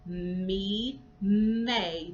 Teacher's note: Me is also a bilabial sound. It's more nasal because the sound comes through the nose, but you're still pressing your lips together to get that sound.